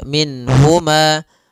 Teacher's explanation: Nun di sini jelas karena bertemu dengan huruf ha maka tidak boleh ditahan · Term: izhar halqi